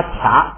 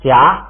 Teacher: 本来都应该发卡，结果它一加上加字变成夹了，不送气了